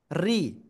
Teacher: রর নিচে যদি জের হয় তাহলে রটা চিকুন করে পড়তে হবে